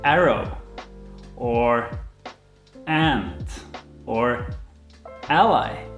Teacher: the ah is kind of like an a and an e sort of pushed together